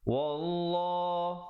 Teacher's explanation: lafz jalalah dibaca tebal, datang sebelumnya baris fathah 2 harakat